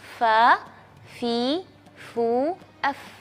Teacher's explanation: bibir bawah bagian dalam dengan gigi serri yang atas ya Jadi bukan semua Fa Tapi sedikit saja menyentuh saja Fa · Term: huruf Fa